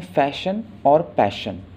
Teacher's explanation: यहाँ पर जो फर्स्ट सिलेबल्स हैं वो स्ट्रेस्ड हैं, ठीक है. जैसे एफ़ और पी, ये दोनों स्ट्रेस्ड हैं, आपको ज़ोर लगाकर बोलना पड़ेगा इन्हें.